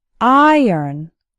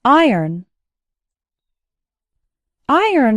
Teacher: and nice and the second syllable actually sounds like ern iron iron has two syllables and the stress is on the first syllable